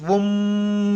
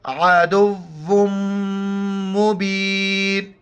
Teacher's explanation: میم اور نون جہاں بھی او اور ان پر جب شد آئے وہاں پر غنہ کریں گے، ناک میں آواز چھپائیں گے، ساؤنڈ ان نوز